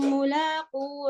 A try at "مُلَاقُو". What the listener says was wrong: پھر واؤ گرا رہے ہو آپ.